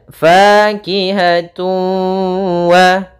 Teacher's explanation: masukkan suara tanwinnya kepada huruf waw dan ditahan dengan gunnah. Karena idgham itu artinya memasukkan, bi gunnah artinya dengan gunnah, dengan penahanan. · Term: idgham bi gunnah